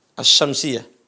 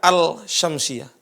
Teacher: Lamnya dimasukkan huruf shin. Jadi masuk. Kalau udah masuk huruf shin enggak kelihatan, karena dia masuk ke huruf shin. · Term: idgham